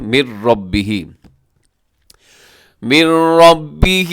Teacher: یہاں ادغام ہے بغیر غننے کے